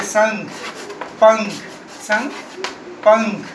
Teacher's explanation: इसका उच्चारण नाक से होता है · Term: अनुस्वार